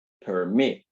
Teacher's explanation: la sílaba que suena con mayor fuerza es la última